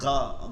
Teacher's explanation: কণ্ঠনালীর শেষ এবং তালুতে একটু ঘষা খাবে যেমন কফ ফালাইলে আমরা যেমন এরকম আমরা করি না বা কিছু